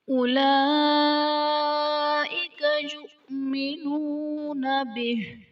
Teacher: یؤمنون میں حمزہ ساکنہ ہے، جھٹکا دے کر پڑھیں گے۔